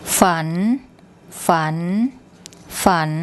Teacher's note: ฝัน ฝัน ฝัน And you should hear that it rises at the end